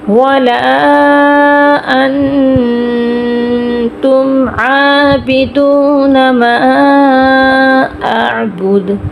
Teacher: ما اعبد دال پہ کلکلا ہوگا، دا آخر میں ساکن ہو گیا.